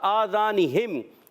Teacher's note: قاعدہ اظہار شفیع کا قاعدہ، غنہ نہیں کریں گے